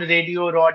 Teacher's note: দুটি স্বরের মাঝখানে এবং শেষে মানে শব্দের শেষে যেগুলো আসলে র এর জায়গা ছিল তেমন শব্দ পাওয়া যাচ্ছে যেখানে এখন ড বসছে